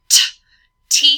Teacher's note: the tip of the tongue is going to touch the alveolar ridge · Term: T sound